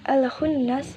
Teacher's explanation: Al-khunnas terdapat hukum bacaan idhar qamariyah karena al-ta'rif bertemu salah satu huruf qamariyah yaitu kha. Cara membacanya ialah jelas sehingga lam sukunnya tetap terbaca. Dan di situ juga terdapat nun bertasydid yang merupakan hukum bacaan huna musyaddadah.